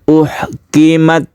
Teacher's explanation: Itu ketika kita tekan huruf ta ini, ketika kita sukun itu berhembus nafas sedikit sehingga timbul bunyi s sedikit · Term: hamas